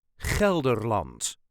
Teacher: Gel-der-land. All the letters will be pronounced, and yes, there is that harsh Dutch g.